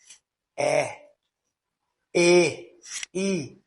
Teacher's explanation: sons que produzem quando a ponta da língua se levanta gradualmente em direção ao palato duro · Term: as anteriores